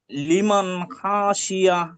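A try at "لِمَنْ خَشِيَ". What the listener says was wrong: না, খ টান দিলে হবে না, লিমান খাশিয়া।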